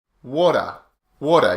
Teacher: we don't pronounce the T we just make the T sound like a D so the tongue is just behind the teeth instead of hitting